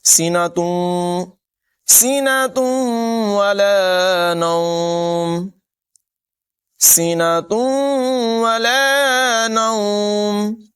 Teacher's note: خذہ لا تأخذہ سینۃ ولا نوم، یہاں پر تنوین کے بعد واو حرف یرمالون میں سے ہے، ادغام ہوگا یعنی غنہ کر کے ملا کر پڑھیں گے